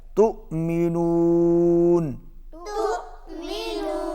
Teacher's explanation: غنہ ہوگا، اور تؤمنون جہاں پر حمزہ ہے واو کے اوپر، تا کو حمزہ کے ساتھ ملائیں گے تو تھوڑا سا جھٹکا لگے گا